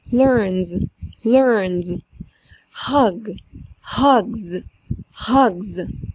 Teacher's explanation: طب لما نيجي نحط لهم الاس الافعال اللي احنا قلناهم دلوقتي ما ينفعش نقول learns، الاس هتتحول لز